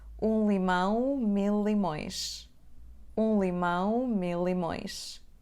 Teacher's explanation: como temos uma palavra que acaba com o som L e a palavra seguinte que começa com o som L, vamos pronunciar só aquele som mais forte.